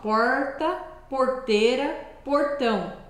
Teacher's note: se você fala aquele r mais caipira você meio que engole a língua · a gente dá uma enroladinha na língua para fazer aquele r